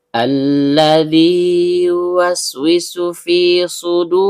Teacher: Lamnya sendiri keluar dari ujung lidah bertemu dengan langit-langit bagian depan. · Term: alif lam syubbiha bisyamsiyah